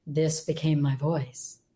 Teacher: it's not an unpleasant voice, right? It's a little breathy, however, and it's not powerful.